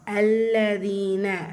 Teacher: லாம் ஷத்தா இருக்குல்ல? அழுத்தம் கொடுத்து ஓதணும். இதுல யா மத்தா.